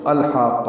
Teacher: ال میں لام ساکن ہے، اس پہ اظہار ہے، حا وسط حلق سے ادا کریں گے۔